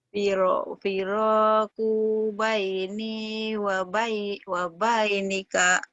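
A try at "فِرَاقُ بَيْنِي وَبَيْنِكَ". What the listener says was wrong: Bagus, tapi kunya pendek ya. Firoku baini, wabainika. Kunya aja pendek ya. Firaku baini wabainika.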